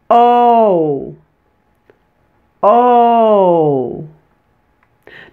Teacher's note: Notice how I glided from the lower O to the higher U sound?